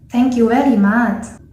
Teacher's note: So in the Thai accent, the letter V in the word very will become W.